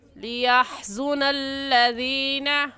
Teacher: ہا حلق کا درمیانی حصہ اس سے نکال کر ہا پڑھتے ہیں